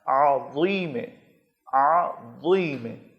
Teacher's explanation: زبان کا اگلا حصہ آپ نے اوپر والے دانتوں کے سرے پر، ٹپ پر ٹچ کرنا ہے اور اس کو گول موٹا کر کے پڑھنا ہے تاکہ یہ ذال نہ بن جائے، اس کو ضا کر کے موٹا کر کے پڑھنا ہے، عظیم، عظیم۔